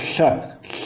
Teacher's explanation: é lateral, é uma fricativa lateral